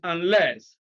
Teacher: unless stress is on the second syllable